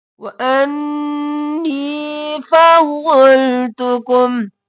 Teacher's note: नी या मद्दा है खींचेंगे, नून पर तशदीद है, गुन्ना